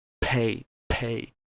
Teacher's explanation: than the English counterparts uh think of the word pay and you see the P at the start is heavily aspirated